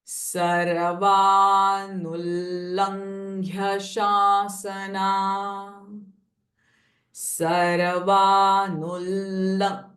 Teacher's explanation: And now there is a anuswara, lang. So the nasalized n sound and gh and ya are joined together. Ng and ghy.